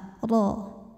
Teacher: huruf ro dibaca secara tafkhim karena berharakat fathah maka ini ro dibunyikan dengan tebal